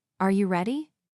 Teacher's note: For example, when a native speaker asks a yes or no question like, "Are you ready?" the pitch of their voice goes up at the end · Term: intonation